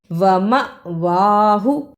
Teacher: ومأواہ، واو کے اوپر زبر، میم پر زبر، اور اس کے ساتھ جو الف ہے اس پہ جزم ہے، یعنی اس پر بھی جھٹکا لگانا ہے۔ وما، واو کے اوپر کھڑی زبر ہے، اس پہ تھوڑی دیر لگانی ہے اور ہا کو جلدی پڑھنا ہے